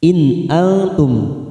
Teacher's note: nun sukun bertemu hamzah kita baca jelas idhar halqi